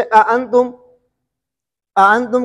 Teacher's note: ادخال کا مطلب یہ ہے کہ پہلے حمزے کے بعد ہم الف مدہ پڑھیں گے